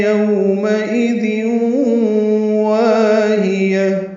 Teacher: ہا اقصی حلق سے ادا کریں گے